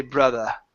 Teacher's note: if you wanted to maintain a British accent you could say brother and it's an ah sound